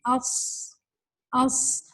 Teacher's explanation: اب ہمس کے اندر صاد کے اندر چونکہ ہمس والی صفت ہے یعنی اس میں ہوا بھی نکلتی ہے، تو اس صاد جب آپ کہتے ہیں تو آپ کی زبان اوپر کو جا کے اسٹک کرتی ہے، چپکتی ہے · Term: اتباق